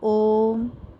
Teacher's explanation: ओ पर 3 मात्राओं का समय लगता है, इसीलिए यहाँ पर 3 लिखा हुआ है। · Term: प्लुत